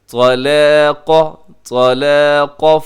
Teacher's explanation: طا موٹا، لام باریک، قاف موٹا